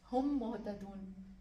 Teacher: ہم اس کو ادغام کر کے پڑھیں گے، یعنی میم کو تشدید لگا کے پڑھیں گے